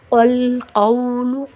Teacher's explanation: قاف کو لام سے ملائیں گے تو قاف کو موٹا پڑھیں گے